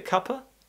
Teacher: for the uh the schwa sound the tongue is more in the middle of the mouth and we don't really do much with the mouth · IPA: /ˈkʌp.ə/